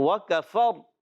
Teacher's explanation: را کو وقف کرنے میں ساکن کریں گے اور را کو پر بھی پڑھیں گے